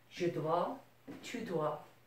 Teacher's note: Notice you're not pronouncing the S here or here.